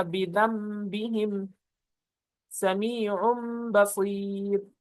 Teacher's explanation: نون ساکن اور تنوین کو میم سے بدل کر غنے کے ساتھ ادا کریں گے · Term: اقلاب